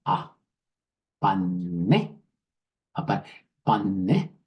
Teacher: All the N's have nasal sounds. The vowel next to them all have nasal sound.